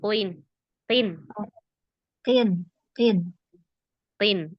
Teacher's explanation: qof itu tidak masuk ke tenggorokan tidak juga ee terlalu depan di huruf kaf